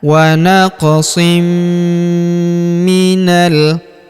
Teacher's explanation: Maka tanwin innya melebur ke huruf mi. Kita tahan dan tekan serta kita dengungkan dua sampai 3 harakat. · huruf na langsung sambung ke huruf lam yang berharakat sukun. Langsung masuk ke sini.